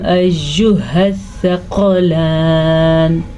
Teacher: سَنَفْرُغُ لَكُمْ أَيُّهَ الثَّقَلَانِ، ہا کے تلفظ کا خاص خیال رکھنا ہے کیونکہ یہ حلق کے آخری حصے سے نکلتا ہے. قاف کو موٹا پڑھنا ہے کیونکہ قاف ہمیشہ موٹا پڑھا جاتا ہے · را کو پر پڑھیں گے کیونکہ را پہ پیش ہے